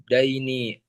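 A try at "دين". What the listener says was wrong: Din, bukan dain. Din.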